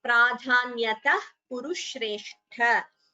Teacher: This word we have come across before, hyatma vibhutayah. Then a visarga followed by ka, jihva muliya